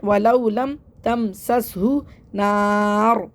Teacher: را کو موٹا پڑھنا ہے کیونکہ را کے اوپر دو پیش ہیں